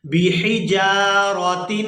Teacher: با زیر بی، حا زیر حی، بیحی، جیم الف زبر جا، بحجا، را زبر را، بحجارا، تا دو زیر تین، بحجاراتن. یہاں پر ہا کو حلق سے اچھی طرح سے ادا کریں گے